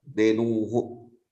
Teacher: There should be a visarga after dhenu.